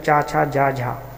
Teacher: च वर्ग होता है ठीक है यह जो है स्पर्श संघर्षी भी कहलाता है